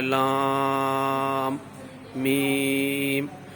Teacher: یا مدہ کے بعد سکون ہمیشہ رہنے والا ہے یعنی جزم ہے، تو یہ بھی مد بنے گی مد لازم حرفی مخفف